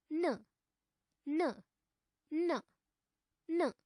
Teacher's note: अस्य उच्चारणस्थानं नासिकया सह दन्ताः सन्ति।